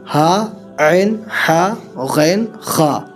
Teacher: حروف حلقی کا مطلب ہوتا ہے یہ حروف حلق سے ادا ہوتے ہیں۔ پہلی حلق سے ادا ہوگا حمزہ ہا، بیچ حلق سے ادا ہوگا عین ہا، آخری حلق سے ادا ہوگا غین خا